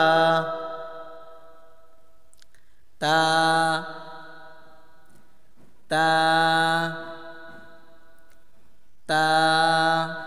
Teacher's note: তা উচ্চারণ হয় জিহ্বার আগা, জিহ্বার আগা সামনের উপরে, সামনের উপরে 2 দাঁতের গোড়ার সঙ্গে লাগাইলেই তা ঠিক মতন উচ্চারণ হবে।